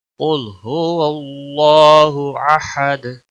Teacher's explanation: वक़फ़ की सूरत में दाल साकिन होगा और इस पर कलकला भी होगा। कुल हुवल्लाहु अहद, दाल पे कलकला होगा।